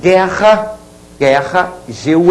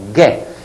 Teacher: porém o u não é pronunciado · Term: dígrafo